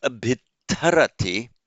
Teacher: so the twa has become a double T but then aspirated